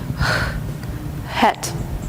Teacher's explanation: В отличие от русского «х», этот звук легкий, практически невесомый, и носители языка в начале слов очень часто его опускают.